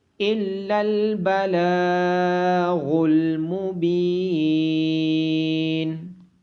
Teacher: الا البلاغ المبین، لام کے اوپر کھڑی زبر ہونے کی وجہ سے لام کو لمبا کیا جائے گا، اور با کے بعد یا مدہ ہونے کی وجہ سے با کو لمبا کیا جائے گا۔